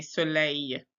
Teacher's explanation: And then soleil, we don't say that L. We say soleil.